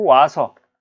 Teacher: 오랑 아가 만나서 와로 축약이 됐잖아요. 이것도 모음 축약이에요.